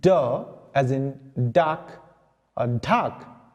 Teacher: your front portion of the tongue comes in contact with the alveolar region. That's why these are called alveolar sounds.